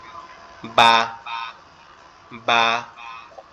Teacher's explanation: বাটা আমাদের দুই ঠোঁট একসাথে লেগে যাবে, লেগে একটু পৃথক হয়ে যাবে যখন আওয়াজটা বের হবে বা বা। এরকম ভাবে বা, এরকম ভাবে আওয়াজটা হবে।